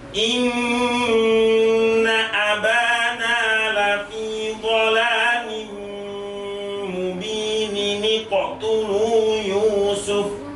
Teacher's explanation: Nunnya ada dua ya, mubinin. Kalau diwasolkan maka otomatis mendatangkan nun kecil sebagai pengganti dari tanwin dari nunnya.